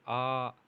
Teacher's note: ह्रस्व स्वर से दुगुना समय लगे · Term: दीर्घ स्वर